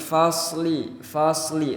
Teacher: Kalau pakai sin pengucapannya jadi fasli, tipis. Tapi kalau pakai shad itu agak ditarik ke belakang jadi fasli, lebih bulat dan lebih tebal